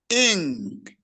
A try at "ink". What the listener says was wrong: Ink. It's not E.